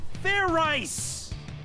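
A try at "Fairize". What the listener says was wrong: Like I said, it's not Fair Ice, it's Fair Eyes. Do it again, and this time make sure you pronounce the Z.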